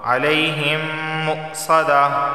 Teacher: میم ساکن کے بعد ایک اور میم آیا ہے تو یہاں پہ ادغام میم ساکن کا قاعدہ لاگو ہونے کی وجہ سے یہاں بھی غنہ ہوگا